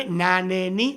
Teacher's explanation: tocamos con la punta de la lengua los alveolos